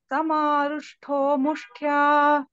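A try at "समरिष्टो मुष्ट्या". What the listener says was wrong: Mushtho no, Mushtya no, T Alpa Prana. Samarishto Mushtya.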